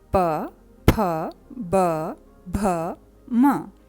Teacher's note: उच्चारण में ऊपर नीचे के होंठ आपस में टकराते हैं